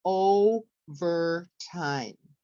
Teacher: we would raise it for the O because that's the stress and then we would lower it for ver and time